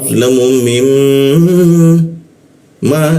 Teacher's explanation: Nah ini mi bertemu mim bertasjid, kita tahan dua ketukan ya, ditahan dua ketukan.